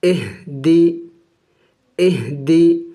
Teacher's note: حمزہ ہا یہ حروف حلقے میں سے ہے اور حروف حلقے میں سے آخری والے جو حلق کے آخری حصہ ہے وہاں سے ادا ہوگا